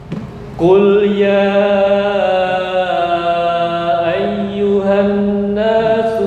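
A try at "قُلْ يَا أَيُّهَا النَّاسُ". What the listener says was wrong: Kurang dengung, kurang ditahan. Qul ya ayyuhan nasu innama.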